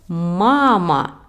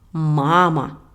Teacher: Maintenant, vous comprenez que la syllabe accentuée est la première ma.